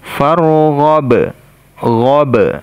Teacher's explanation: ba sukun di sini kita pantulkan juga.